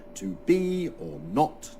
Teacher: the first syllable is unstressed and the second is stressed